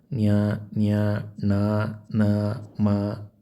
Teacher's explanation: ಅನುನಾಸಿಕ ಅಂದರೆ ಮೂಗಿನ ಸಹಾಯದಿಂದ ಉಚ್ಚರಿಸಲ್ಪಡುವ ಅಕ್ಷರಗಳಿಗೆ ನಾವು ಅನುನಾಸಿಕ ಅಂತ ಹೇಳ್ತೀವಿ.